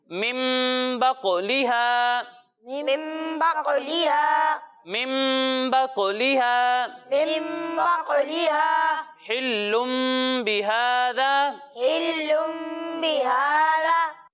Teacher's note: اقلاب میں نون ساکن یا تنوین کو میم سے بدل دیں گے اور گنہ کر کر پڑھیں گے۔ یعنی یہاں نون ساکن ہے اور یہاں تنوین ہے تو اسے ہم میم سے بدل دیں گے اور گنہ کر کر پڑھیں گے۔